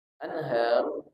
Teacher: Dah karena dia berhenti jadi sukun jadi mati ro sukun atau ro mati sebelumnya berbaris fathah dibaca tebal